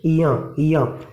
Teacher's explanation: इसका उच्चारण होता है या के ऊपर जैसे चंद्र बिंदु लगा हो, या। और जो अणा खाली जो बोलते हैं वो ये वाला है।